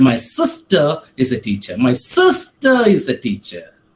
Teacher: the stress on the word sister tells or gives the meaning that it is my sister who is a teacher